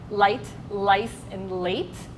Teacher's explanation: Our tongue is touching our alveolar ridge. That's the little thing behind your teeth, right?